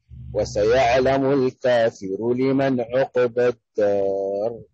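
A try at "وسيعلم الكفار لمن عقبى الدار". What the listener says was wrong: أحسنت، لكن ما هي في روايتنا، هذه في قراءة أخرى، لكن هنا بالجمع وليس بالإفراد. وسيعلم الكفار،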